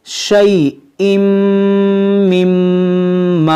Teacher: یہاں پر دیکھیں میم مشدد ہے، ان دونوں میم میں ہم غنہ کریں گے